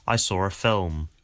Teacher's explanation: people sometimes add an R sound to a word that doesn't actually have one if it's followed by a vowel in the next word · So you can hear that there's an R sound connecting saw and ah. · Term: intrusive r, the intrusive R